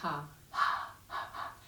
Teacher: it's simply making a soft raspy sound at the base of the throat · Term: ujjayi breath